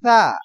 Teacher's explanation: থা উচ্চারণের সময় কিন্তু সিনের মতন উচ্চারণ আসবে না এখানে উচ্চারণ হবে থা পাতলা থা